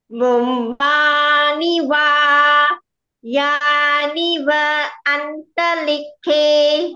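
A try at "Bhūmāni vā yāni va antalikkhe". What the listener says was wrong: Okay, acceptable.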